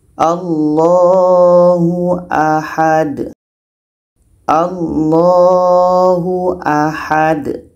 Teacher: Ha ini pendek, tetap dipendekkan, sedangkan da ini qalqalah kita pantulkan.